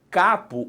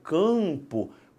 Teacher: o ar sai inteirinho pela boca. Quando eu falo campo, parte do A vai para o nariz. · Por quê? Porque a sua língua sobe um cadinho e empurra esse A para o céu da boca, fazendo uma nasalização